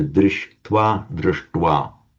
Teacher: Again, by a regular rule of Sandhi in Sanskrit, where you get a sh followed by a t, becomes a shta. They both become retroflex.